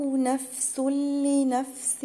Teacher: هنا تنوين ورا لام هتبقى ادغام بس من غير غن